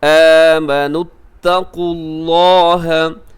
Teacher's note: آمنوا اتقوا اللہ، اس میں قاف موٹا ہے، لفظ اللہ کو آپ پر پڑھیے گا کیونکہ لفظ اللہ سے پہلے قاف کے اوپر پیش ہے، آپ اسے موٹا پڑھیے گا